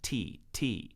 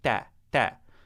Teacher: when you are making the ta sound in kitab, you don't puff air out the front of your mouth like you do in English when you make a T sound.